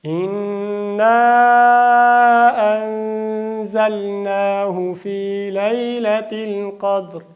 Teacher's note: قاف ډک دی، دال باندې قلقله ده او را اجتماع ساکنین حالت کې را هم ډکه ده